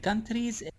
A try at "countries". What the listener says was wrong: Okay, we say the word countries, but more country, just countries. You're pronouncing the R kind of like you do in your language, right? So you can study that if you want.